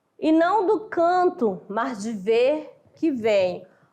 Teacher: Sílaba tônica na 4ª, na 8ª e na 10ª sílaba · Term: sáfico